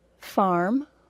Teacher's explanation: in the United States we always say the R sound